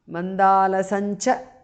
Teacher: Anuswara changes to the nasal of cha varga. Nya. Makara alaya.